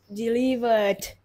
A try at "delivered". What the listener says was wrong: Rất tốt.